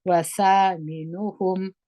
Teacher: میم باندې اظهار کوي، دواړه شونډان سره ومښلوي، د میم مخرج ښکارا کوي